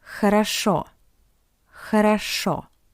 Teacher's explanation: Because the first two O are unstressed, that's why we pronounce it as A.